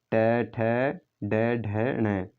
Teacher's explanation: अगर ट की बात करें तो ट दोस्तों मूर्धा से बोला जाता है। तो ट वर्ग है, ट के अंतर्गत आते हैं ट ठ ड ढ ण, तो वो दोस्तों मूर्धा से बोले जाते हैं